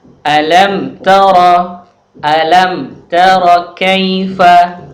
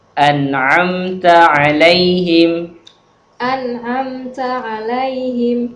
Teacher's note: Jadi pengucapannya harus mimnya tampak jelas tanpa gunnah. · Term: idhar syafawi